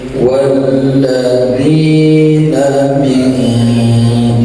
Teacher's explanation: nun mati menghadapi qaf, ditahan samar-samar, ya, ikhfa namanya.